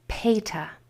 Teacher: A is going to change to the schwa sound when it's spelling the sound at the end of a word.